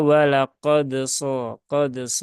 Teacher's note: kolkolahnya tidak perlu berlebihan sampai tadi ya ada tambahan hamzah di belakang walaqad